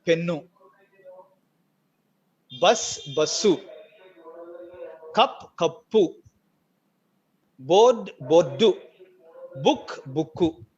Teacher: You take an English word and add u and it becomes a Telugu word.